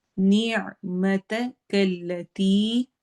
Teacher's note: نیع عین کی آواز حلق میں سے درمیانے حصے سے